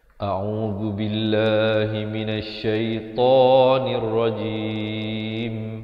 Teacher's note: Makhrajnya hamzah di pangkal kerongkong, ain di tengah kerongkong. Dibaca 2 harakat, zu di hujung lidah, bila dibacakan dengan nipis lafz jalalah 2 harakat.